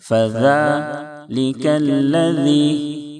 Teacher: دونوں ذال کو نرمی سے پڑھیں، زا کی آواز نہ نکلے